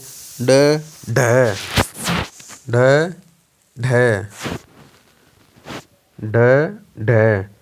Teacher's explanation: जीभ जो है हमारे तालु को छूते हुए एक झटके के साथ नीचे की तरफ आती है। अब नीचे की तरफ आती है, बोल के देखिए, ड ढ, ढ ढ, ढ ढ। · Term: ताड़न जात व्यंजन, ताड़नजात व्यंजन